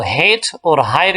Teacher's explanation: So these sounds are formed at the glottis, which is the opening between the vocal cords in the larynx. ये ऐसे sounds हैं जो कि glottis, जो कि एडम नेपल है या आप इसको वोकल कॉर्ड कहते हैं, उससे थोड़े से नीचे जो वेंट पाइप है उस जगह से ये प्रोड्यूस होते हैं। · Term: glottals